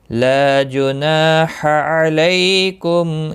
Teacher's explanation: لا الف مدہ ہے، نا الف مدہ ہے، ایک ایک الف کے برابر کھینچ کر پڑھیں گے۔ ح وسط حلق والا ہے، اس کی ادائیگی بہت ضروری ہے کیونکہ لحن جلی میں جب آپ حرف چینج کرتے ہیں اپنے مخرج سے تو لحن جلی کا خطرہ ہوتا ہے، لحن جلی ہوتا ہے۔